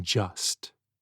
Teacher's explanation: The sounds d and zh blend into the sound j, as in just.